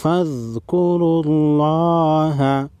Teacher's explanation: لفظ اللہ سے پہلے والے حرف را پر پیش ہے، لفظ اللہ کو موٹا پڑھیں گے